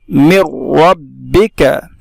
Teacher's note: मीम का रा में इदगाम होगा, इसलिए कि नून साकिन के बाद रा है, इसलिए इसको बिला गुन्ना के जल्द पढ़ेंगे। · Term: इदगाम बिला गुन्ना